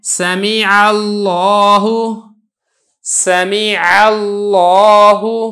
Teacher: لفظ اللہ سے پہلے زبر ہے لہذا لفظ اللہ کو موٹا کر کے ادا کیا ہے۔